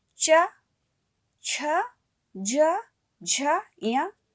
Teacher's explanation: इसी प्रकार से बच्चों च, छ, ज, झ, य, इसका उच्चारण तालु से किया जाता है। इसका उच्चारण करते समय जीभ हमारे तालु को स्पर्श करती है।